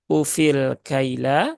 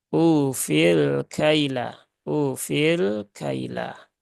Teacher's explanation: damah maka dia masuk dalam kategori Mad Thobi'i atau mad asli sehingga u-nya di sini harusnya dibaca panjang dua harakat